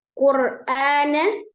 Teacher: ro sukun dibaca tebal karena sebelum ro sukunnya itu ada harokat dhamah